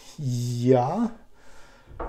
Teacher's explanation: we'll let the air go between the tongue and the palate, hard palate.